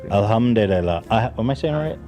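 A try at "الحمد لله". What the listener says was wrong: You're adding like 4 extra syllables.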